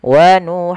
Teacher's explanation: Nah, sedangkan di sini di tengah-tengahnya maka ada yang terdengar seperti bunyi ng. Tapi di sini samarnya karena ketemu dengan huruf fa, kita menyamarkannya ke huruf huruf fa. Maka wuhum seakan-akan langsung melafalkan huruf fanya. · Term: ikhfa